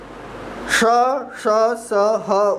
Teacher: श, श, स, ह उष्म है, अर्थात इनका उच्चारण करने के लिए भीतर से जरा अधिक जोर से श्वास लगानी पड़ती है। तीनों स बोलेंगे तो आपको उच्चारण में मुख से ज़्यादा वायु निकलेगी और वायु इतनी गर्म होगी।